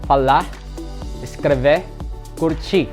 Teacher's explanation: letter R at the end of a verb in Brazilian Portuguese is pronounced like an H, especially during a casual conversation.